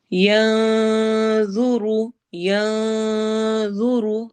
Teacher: ینظر، ینظر نون کی آواز کو چھپا کر پڑھنا ہے. جب بھی اخفا جہاں پر ہم کر رہے ہوتے ہیں اس کے بعد موٹا حرف آ رہا ہو، جیسے یہاں پہ ضوا آ رہا ہے جو کہ موٹے حروف میں سے ہے، تو ہمارا غنہ بھی آٹومیٹیکلی موٹا ہی ہوتا ہے